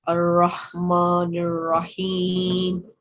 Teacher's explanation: Well done for making this raw thick, because this raw is carrying fatha on top, and therefore this would be a thick raw